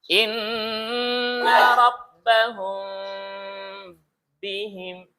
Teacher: Dari bibirnya itu dari nggak rapat sampai nanti rapat dia ketika dia mengucapkan huruf ba-nya. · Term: Mimnya samar